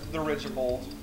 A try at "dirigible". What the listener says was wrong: Dirigibold. You said Dirigibold. There's no bold, it's Dirigible.